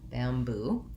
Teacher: And so bamboo is one that actually the spelling is pretty good for representing the sounds. We have second syllable stress, so we would have the black cat vowel and then the tense oo vowel